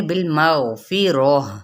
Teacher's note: ہا کی آواز آنی چاہیے کہیں حمزہ نہ یہ بن جائے